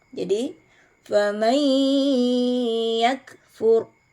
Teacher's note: idgham bighunah jadi e cara membacanya dilebur disertai dengan dengu jadiakfurakfur Nun sukunnya dilebur ke huruf ya